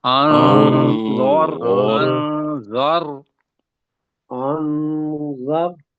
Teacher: را کو موٹا کرنا ہے اس لیے کہ را کے اوپر جزم ہے اور زال کے اوپر زبر آئی ہوئی ہے.